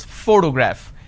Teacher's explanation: When I pronounce this particular word, photograph, the correct pronunciation is photograph, which means I am stressing on this particular syllable, which is the first syllable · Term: word stress